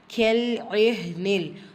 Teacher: ஹா இடையில இருக்குல்ல அது சுக்கூன் பெற்றிருக்கு. ஹம்சுரை சட்டம் காட்சி வெளிப்படுத்தி ஓதணும்